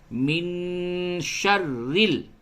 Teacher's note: اب دیکھیے یہ جو را ہے اس را کے نیچے زیر ہے تو اس را کو باریک کر کے پڑھنا ہے